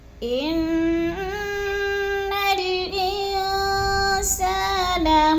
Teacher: ان کی نون مشدد ہے، سختی سے جماؤ کے ساتھ ہم نے پڑھنا ہے اور نا کو لمبا نہیں کرنا۔ زبر ہے، حرکت کو اگلے لفظ کے ساتھ لام کے ساتھ جلدی جلدی ملا کے پڑھنا ہے اور نون مشدد پر غنہ کرنا ہے، سختی سے جماؤ کے ساتھ پڑھنا ہے۔